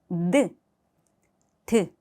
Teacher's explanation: 한글의 이 디귿은 발음을 할 때 공기 반 소리가 난다면 러시아어 알파벳 이 네에는 공기가 없습니다.